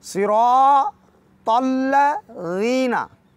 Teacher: सिरा और रा को भी मोटा पढ़ेंगे और अलिफ मद्दी आ गई चूँकि, लिहाजा थोड़ा सा लंबा करें, कम अज़ कम 2 हरकत के बराबर।